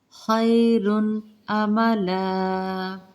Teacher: خی لین کا قاعدہ، خا کو پر پڑھیں گے، رن تنوین ہے، آگے حمزہ آ رہی ہے حروف حلقی میں سے، تو ہم نے یہاں پہ اظہار کرنا ہے تنوین کا